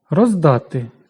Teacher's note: Д дзвінкий, тож оглушення не відбувається.